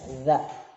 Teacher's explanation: Kalau za di ujung lidah digigit ilatnya